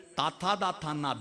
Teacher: നാവിന്റെ അറ്റം പല്ലുമ്മ തൊട്ട് പറയുന്ന അഞ്ച അക്ഷരങ്ങൾ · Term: ദന്ത്യം